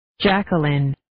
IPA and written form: 'dʒækwʌlɪn (Jacqueline)